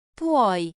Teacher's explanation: Feel the glide, PWOI.